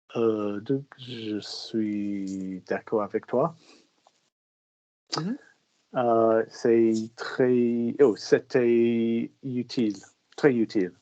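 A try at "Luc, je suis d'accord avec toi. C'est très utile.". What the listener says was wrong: Lovely.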